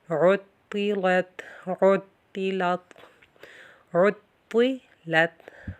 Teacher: طا موٹا ہوگا، لام باریک، تا پھر باریک